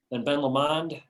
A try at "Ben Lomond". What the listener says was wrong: You did. It sounded French instead of Scottish.